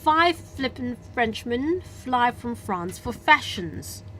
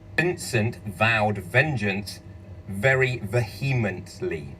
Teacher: F就係清音，V就係濁音咯喎